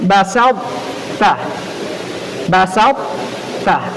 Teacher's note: Maka cara bacanya tetap dimunculkan sifat tebal pada huruf ta, kemudian dimasukkan ke huruf ta, jangan dihilangkan.